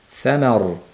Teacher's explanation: sama deb ma'ni ingichka qilib, keyin roni yo'g'on qilamiz.